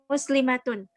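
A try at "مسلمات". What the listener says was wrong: Panjang.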